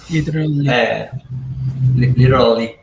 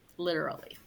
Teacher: use your tongue almost like a letter D when the tongue goes at the roof of your mouth behind your teeth